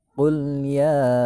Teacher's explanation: Nah, ya nih bunyi ya dibaca 5 ketukan. Tuh ada tandanya, ada tulisannya kan, 5 ketukan. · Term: mad jaiz munfasil